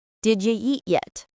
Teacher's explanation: Did ya is the reduction of did you, and eat yet has connected speech. So the T at the end of eat links to the Y in yet, making a ch sound.